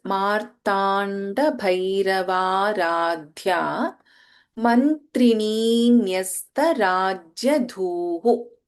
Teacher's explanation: We have Bha Mahaprana and Dha Mahaprana in this.